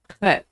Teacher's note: Chet is pronounced a throat-clearing noise that doesn't occur in English. It's like in ach in German, or loch in Scottish.